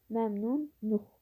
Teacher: Luq şəkilçisi nuq şəklində tələffüz olunur.